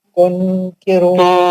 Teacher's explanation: زبان نہیں لگے گی. زبان نہیں لگے گی. اخفا ہوگا.